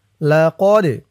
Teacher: এই দালটা কলকলার হরফ ধাক্কা দিয়ে পড়তে হবে